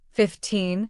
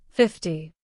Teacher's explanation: When English speakers say 15, the stress falls on the second part 15, while in 50, the stress falls on the first part 50. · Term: stress patterns